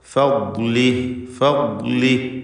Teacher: നാവിൻ്റെ സൈഡിൽ നിന്നാണ് ഇതിൻ്റെ ഉച്ചാരണം വരുന്നത്. നീളത്തിൽ, അണപ്പല്ലിനോട് ചേർത്ത് നീളത്തിലാണ് അതിൻ്റെ സൈഡിൽ മൊത്തം ഭാഗം ഉപയോഗിച്ചുകൊണ്ടാണ് ദ്വാദ് ഉച്ചരിക്കേണ്ടത് എന്നർത്ഥം.